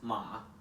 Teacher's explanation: the third tone which goes downwards and upwards